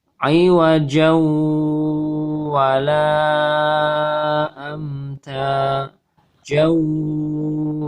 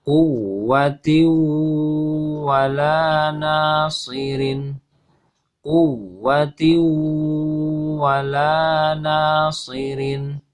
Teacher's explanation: maka suara nun sukunnya hilang, idgham ke huruf waw ya, atau masuk ke huruf waw, lebur ke huruf waw. Kemudian disertai dengan suara dengung atau gunnah yang ditahan kurang lebih 2 harokat ataupun 3 harokat ya.